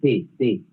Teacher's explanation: La T es dental